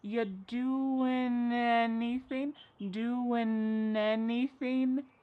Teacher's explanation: We link together doing because we're going to drop the G. It ends with the sound n, the N sound. And then the next word, anything, we sometimes drop the A and we're going to push those two together because there's two N sounds side by side.